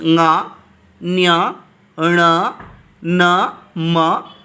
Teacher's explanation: each varga's fifth letter as well as the anuswara comes from nose. So just we close our nose and we are trying to pronounce this letter, we can't able to pronounce. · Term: nasika